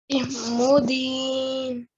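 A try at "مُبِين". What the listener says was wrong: So this is a ba. Immubin.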